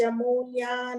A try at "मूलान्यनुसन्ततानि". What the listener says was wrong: Mulyan, Mulan, it is Mulan only, it is not Mulyan.